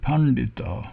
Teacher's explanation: And then we have Pandita, Pan, and here we have 2 retroflex. We have a retroflex N and a retroflex D